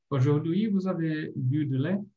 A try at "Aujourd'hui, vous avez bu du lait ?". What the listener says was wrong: Só que a última ali ainda dá para entoar um pouquinho mais.